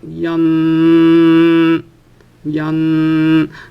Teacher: so the pitch is constant so even if you elongate it you will be constant · And the reason I'm calling the first group flat tone is because somehow from the start of the word, from the start of the sounding of the word to the end of the sounding of the word, the pitch remains the same. So for example, in the case of yan, if you elongate the word, you'll see something like yan, yan. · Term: flat tones